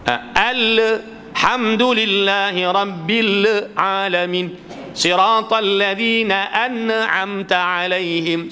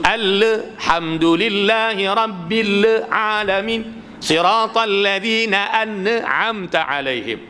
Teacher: seolah-olah ada baris di hujung tak sempurna sukun dia